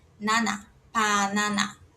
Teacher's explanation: Mas como o coreano, essa consoante que tem som de P e B, no começo da palavra vai ser P de pato, então não vai ser banana, vai ser panana. E aí, como o A é sempre aberto, não existe esse som nasal de nana